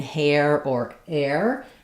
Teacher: it's the air diphthong. So just like in hair or air, and that syllable is stressed, so it's going to be longer and have that clear vowel.